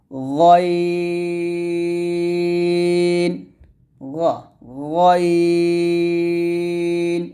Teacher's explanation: হরফটা মোটা করতে হবে হলকের শেষ থেকে গাইন উচ্চারণ করতে হবে